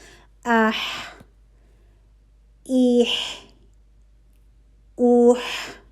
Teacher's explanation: وسط الحلق سے جو دوسرا حرف ادا ہو رہا ہے وہ ہے ح